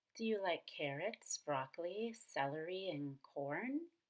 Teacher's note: we'll just do it down up on each of the words but we'll do a bigger down up on the very last word